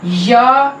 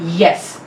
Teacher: Means इस sound में हमारा जो टंग का फ्रंट पार्ट है वो एक्टिव आर्टिकुलेटर है और हार्ड पैलेट हमारा पैसिव आर्टिकुलेटर है। Means front of the tongue raises to hard palate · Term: palatal